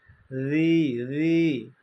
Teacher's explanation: জালের উচ্চারণটা হবে পাতলা নরম